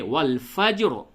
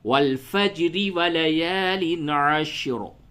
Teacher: اس را کو حالت وقف میں پڑ پڑھا جائے گا، اور حالت وصل میں باریک پڑھی جائے گی۔ تو یوں ہوگا حالت وقف میں والفجر، اور حالت وصل یعنی ملانے کی حالت میں والفجر ولیال عشر۔